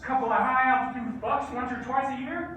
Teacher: Listen to the vowel in one and once, how it's all the way back in his mouth. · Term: Wyoming accent